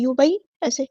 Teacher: یا ساکن سے پہلے دیکھیں یہاں پر زبر آئی ہے تو مدلین ہوگی